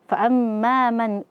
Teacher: nun sukun bertemu dengan hamzah, maka di sini hukumnya adalah izhar halqi, dibaca jelas.